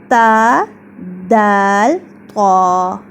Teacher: تو سب سے پہلے ہم پڑھتے ہیں حروف نطعیہ، یعنی سب سے پہلے جب زبان کی نوک اوپر والے سامنے کے 2 دانتوں یعنی ثنایا علیہ کی جڑ پر لگتی ہے تو 3 حروف ادا ہوتے ہیں